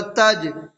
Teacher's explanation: جیم حروف قلقلہ میں سے ہے اور جیم کے اوپر جزم ہے تو اس میں قلقلہ ہوگا